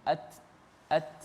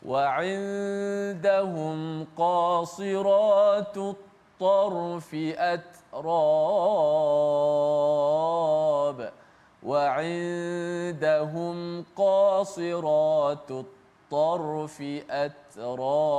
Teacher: huruf ta yang mati dibunyikan sedikit hamas anginnya